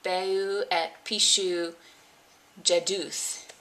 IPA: beu ɛt piʃu jɛduθ